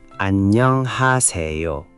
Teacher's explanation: The double nin in 안녕 creates a longer N sound. It's not 안녕, it's 안녕, with the N held slightly longer.